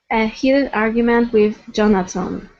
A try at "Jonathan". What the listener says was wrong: So here you're saying Jonathan, pronouncing a T. We need a TH. Jonathan.